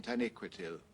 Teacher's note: So it's like there is a secondary emphasis on that last syllable. Though the first one is the louder, the first one is the primary emphasis.